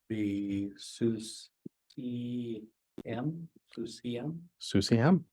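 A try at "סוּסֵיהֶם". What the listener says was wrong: Susiem. Very good.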